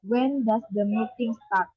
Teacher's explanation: The word start including the question mark rises up. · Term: intonation